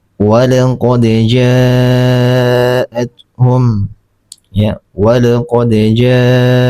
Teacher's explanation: Di beberapa pendapat ulama qiraat ini mad wajib muttasil ini diwajibkan 6 harokat. Tapi menurut Imam Abu Ya'la 4 sampai 5 harokat saja.